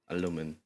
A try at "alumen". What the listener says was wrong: Alumen with an E. You're saying it with an I. It's with an E. You're doing it more with an I.